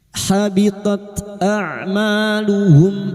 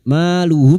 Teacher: Maluhum mim sukun bertemu fa idhar safawi, mim sukun dibaca jelas tanpa mendengung